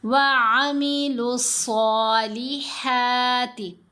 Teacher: صاد کو موٹا پڑھنا ہے، ہا کی آواز باریک ہے، گلے کے درمیان والے حصے سے ادا ہوئی